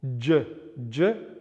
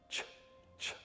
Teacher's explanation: We have also pre-palatal affricate consonants which can be voiced and unvoiced as well. So the voiced pre-palatal affricate, pre-palatal being just where the palate starts, j, j, voiced, and ch, ch, unvoiced